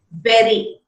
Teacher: the tip of the tongue just touches the palate once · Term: tap or a flap